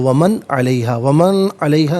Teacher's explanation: वमन में नून साकिन पे गुन्ना नहीं करेंगे, इसलिए कि इसके बाद हरफ अलकी आइन आ रहा है, तो वमन अलैहा नहीं।